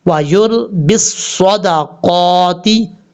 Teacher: قاف کے اوپر کھڑا زبر ہے، ایک الف کی مقدار لمبا کر کے پڑھا جائے گا